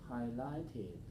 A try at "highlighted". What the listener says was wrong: Okay, so you got the third ending, that was correct, but you changed the stress. To keep the stress, highlight. Okay, where's the stress when I say the word highlight? Highlight. Where's the stress? 2-1, right? Highlight. Highlighted. Highlighted.